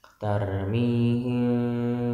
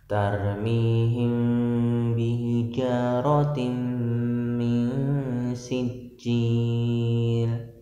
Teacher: mengatupkan dua bibir ya, diiringi dengan ikhfa, dengung, gunah